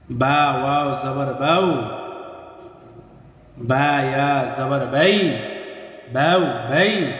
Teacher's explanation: এরপর লক্ষ্য করেন, তা ওয়াও জবর তাউ, তা ইয়া জবর তাই, সা ওয়াও জবর সাউ, সা ইয়া জবর সাই, তাউ তাই, সাউ সাই। মোট কথা, জবরের পরে ওয়াও সাকিন এবং জবরের পরে ইয়া সাকিন লিনের হরফ। আর লিনের হরফ হইলে তাড়াতাড়ি করিয়া পড়তে হয়।